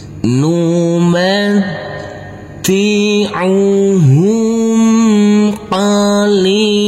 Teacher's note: Tanwinnya kita baca dengan samar-samar dan kita dengungkan. Pada waktu berdengung persiapan masuk ke huruf sa. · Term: bacaan ikhfa